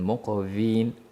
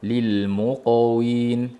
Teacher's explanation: Endi qoffa qalqalasi yo'g'on qalqala va vov labimizdan chiqadi. Uchraydigan kamchilik qalqala qilmaslik va vovni o'zbekcha o'zimizni v ni aytib qo'yishligimiz.